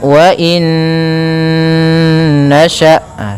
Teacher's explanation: dengan huruf nun maka hukum tajwidnya yaitu idgham bhunah cara membacanya masukkan Nun yang pertama kepada Nun kedua kemudian ditahan ghunahnya karena idgham itu memasukkan Bil ghunna disertai dengan ghunah maka wainasya